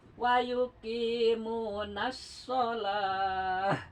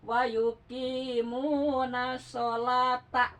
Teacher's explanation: Itu disebut tamar butoh. Kalau di wakaf jadi ha. Kalau dibaca jadi ta ya.